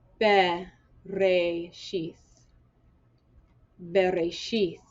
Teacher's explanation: with the schwa, I'm saying it's not a vowel, it's saying sound out the consonant.